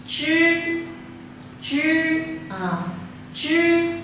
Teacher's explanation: trong khi phát cái âm này ra, chúng ta phải cuộn cái lưỡi của chúng ta cong lại. Đây ạ, cuộn cho cái lưỡi của chúng ta cong lại thì chắc là phát âm sẽ chuẩn. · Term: âm cuộn lưỡi